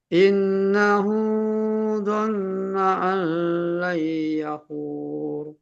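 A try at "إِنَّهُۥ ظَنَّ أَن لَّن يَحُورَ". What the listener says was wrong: Nah, layyahur ditahan dengungnya hanya yang warna merah saja, yang 2 harokat saja. Lagi dengungnya tambahin. Nanti tinggal ditambahin lagi ya masalah dengungnya ini.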